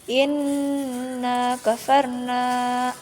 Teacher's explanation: Cara bacanya dengung dan samar serta ditahan. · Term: gunnah